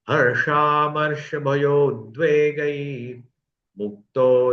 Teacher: मुक्तो य सचम प्रिय उद्वेग है उ का ओ का होगा भय में जो अ है और उद्वेग का उ दोनों मिलकर के ओ हो गया